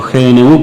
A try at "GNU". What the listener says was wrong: La palabra que se escribe GNU en castellano se pronuncia new. No GNU, sino new.